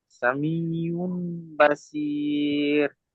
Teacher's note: মিমের দ্বারা পরিবর্তন করে একালিফ পরিমাণ গুণনা করে পড়তে হবে।